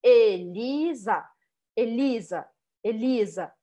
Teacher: eu poderia dizer que a sílaba forte é o li né é a segunda sílaba